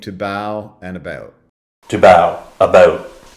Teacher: the first part of the diphthong starts out higher in the mouth and more centralized as well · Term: raised diphthong